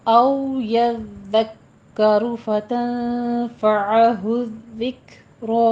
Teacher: रॉ दोनों जगहों पे मुफ़ख्खम है